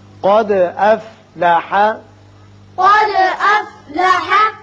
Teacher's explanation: دال ساکن ہے، اس کی صفت قلقلہ ادا کریں گے اور قاف کو پر پڑھیں گے